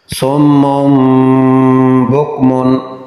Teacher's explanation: نون تنوین کے بعد با آیا تو نون کو میم سے تبدیل کیا گیا اور اخفا کیا گیا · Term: اقلاب